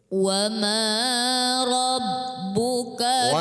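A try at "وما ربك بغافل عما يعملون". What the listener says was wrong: Wa ma rabb itu lama. Wa ma rabb cukup. Masih belum bergerak aktif ya pita suara untuk gerinitnya.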